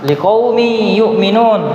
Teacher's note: Maka tadi kita katakan bahwasanya tanwin ketika bertemu dengan ya dibaca dengung